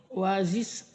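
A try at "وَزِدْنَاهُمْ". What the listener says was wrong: wae itu mah bukan es tapi dal. Wazid de wazid si de dadi du dadi du wazid wajis wae.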